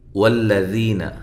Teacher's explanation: لام کو باریک پڑھنا ہے، موٹا نہیں کرنا